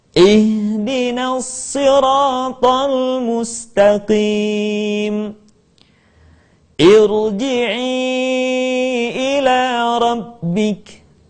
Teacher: unsur yang kedua yaitu huruf yang pertamanya bukanlah u maka kemudian Hamzah wasal dibaca dengan harakat I